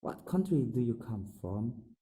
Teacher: at the end of the sentence, the intonation is falling